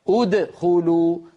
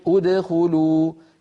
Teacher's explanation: ولا سكت بعد الحرف المقلقل